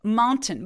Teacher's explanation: 티소리가 앤소리에 먹혀 들어가기 때문에 티를 아예 발음을 하지 않고 콧소리로 엔 소리만내는 겁니다